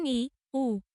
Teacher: উচ্চ স্বরধ্বনি। এগুলোর উচ্চারণের সময় জিভ সবচেয়ে উপরে ওঠে